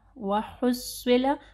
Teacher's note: حق واضح پڑھنا ہے، صاد کو ہیوی پڑھنا ہے